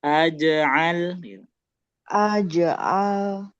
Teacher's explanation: Aj'al jimnya mantul lamnya ngalir gitu.